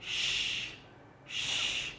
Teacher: produced by recurling the tongue back towards the hard palate and directing the airflow over the middle of our tongue, creating a smooth and sibilant sound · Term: palato-alveolar consonants